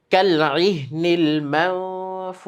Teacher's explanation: কালইহনিল মানফুশ। শেষে শিন, শিনের আওয়াজটা একটু এরকম বাঁশির মতো এরকম একটা শব্দ হয় যদি তার উপর আমরা ওয়াকফ করি · নুন সাকিনের পরে ফা আসলে সেটা ইকফার গুন্না হয়। আমরা নাকের ভিতরে আওয়াজটাকে একটু লুকিয়ে পড়ব।